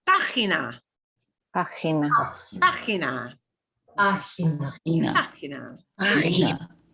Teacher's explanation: we've got a G right in the middle, but it's still going to have the ch sound because it's GI